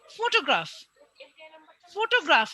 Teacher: গয়ের পরে ফ খুব তাড়াতাড়ি চলে আসছে। ফটোগ্রাফ, এখানে এ এবং আর দুটাই খুব শর্টে আসছে, বা আর এর পরে এটা প্রায় শোনাই যাচ্ছে না, খুব শর্ট, সেই জন্য এটা শর্ট ভাওয়েলস এর মধ্যেই পড়ে।